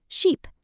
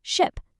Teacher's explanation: the long e vowel represented by those two little triangles in the IPA which gives us sheep, but the short quick i vowel gives us ship